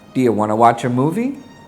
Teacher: Want to is simply reduced to wanna